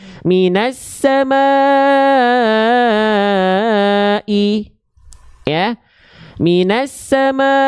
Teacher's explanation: mad wajib ya dibaca lima harakat panjangkan ya